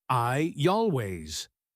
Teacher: That tiny Y helps us move from the open mouth of I to the rounded start of always.